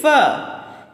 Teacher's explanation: فا کی ادائیگی میں ہمارے جو اوپر کے سامنے والے دو دانت ہیں وہ نیچے والے ہونٹ سے ملتے ہیں